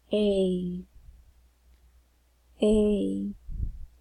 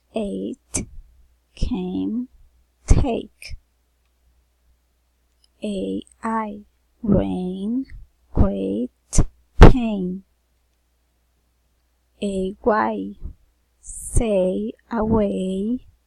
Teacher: vowel sound a the lips are not blonder they are relaxed the tongue is tense moves from the mid high to the high position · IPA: /ei/